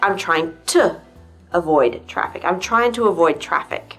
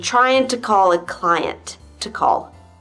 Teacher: do you hear how each time to is actually pronounced to? And the sound actually has a name. It's called a schwa. The schwa is a weak stress in a word, and it represents 30% of all sounds in English.